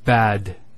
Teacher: The word bad. Notice the elongation of the a sound. We don't say bad, we say bad.